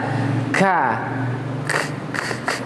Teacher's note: Kalau kaf kita baca ka, ada angin sedikit